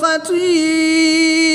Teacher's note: یا مدہ کے بعد حمزہ اسی کلمے میں ہے تو یہاں پر مد متصل ہوگی، 3 سے 5 الف تک کھینچ کر پڑھیں گے